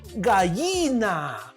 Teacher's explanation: a este fenómeno de no reconocer el sonido ella, ahí está, de no reconocer, se le conoce como el yeísmo.